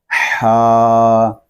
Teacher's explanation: ہا جو ہے یہ حلق کے درمیان والے حصے سے ادا ہوتا ہے، جیسے ہم تیز چلتے ہیں ہمارا سانس پھولتا ہے، ہم زور سے سانس لیتے ہیں تو وہاں سے ہی حرف کو ادا کریں گے، ہا۔